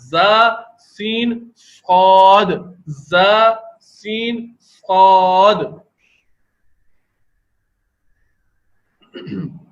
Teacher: اوپر نیچے کے دانت جو سامنے کے 2 دانت ہیں وہ تقریباً ملنے کی کیفیت میں آ گئے ہیں اور زبان کی نوک ان کے سامنے کی طرف لگ